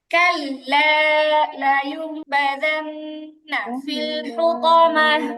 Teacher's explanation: আপনাদের কারো কারো কাল্লা এর লামের মধ্যে টানটা হচ্ছে না, টান দিতে হবে।